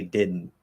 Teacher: So we go into the D, but it doesn't get released. And instead, it gets redirected through the nose. So it gets caught for a second and then goes through the nose. · What we're doing there is we're closing into that TDN position because it's all the same position, not touching the teeth, right? We're doing that sort of nasal plosive held D.